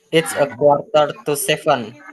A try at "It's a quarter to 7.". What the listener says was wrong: Okay, good.